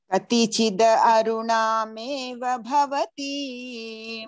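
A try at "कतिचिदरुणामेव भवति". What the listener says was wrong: Don't say aruna, it is daruna. Because, see, it is katichit aruna, but the sandhi is there. So the we have to maintain and say, katichidaruna.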